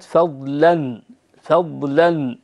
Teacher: اللام مرققة هنا لأن الضاد ليست من موجبات تغليظ اللام، الضاء اللي فيها القرن هذاك الإشارة، الضاء هي التي تكون سببا في تغليظ اللام المفتوحة، أما الضاد فليست كذلك.